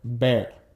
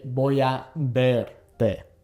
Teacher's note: B and V in Spanish both make the same sound. So in this case, it's kind of like a soft B sound